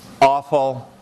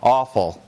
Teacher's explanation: Starts with a glottal stop. Awful. Doesn't start with a glottal stop.